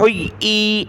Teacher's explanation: بہت سارے کیا پڑھتے ہیں حُيِّ، حمزہ پڑھ لیتے ہیں، حمزہ نہیں پڑھنا